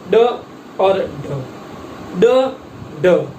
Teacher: जीवा मूर्धा को स्पर्श करके तुरंत नीचे की ओर गिरती है और उनका जो उच्चारण होता है वो उच्चारण के लिए जो प्रयोग में आते हैं वो उत्क्षिप्त वर्ण कहलाते हैं।